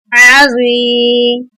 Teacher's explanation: आइन ज़बर आ, ज़ुआ या ज़ेर ज़्वी, आइन की हम हलक से अदायगी करेंगे और ज़ुआ को मोटा पढ़ेंगे